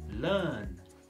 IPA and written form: lɜːn (Learn)